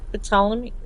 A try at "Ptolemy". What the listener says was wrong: It's like pterodactyl. You don't say the P. It's Ptolemy, I think.